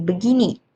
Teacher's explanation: Ee di sini terjadi kontraksi fonologis dan asimiliasi bunyi. Frasa bagai ini mengalami penyatuan dan pelepasan segmen vokal. Sehingga kalimat bagai ini menjadi begini melalui penyederhanaan artikulasi.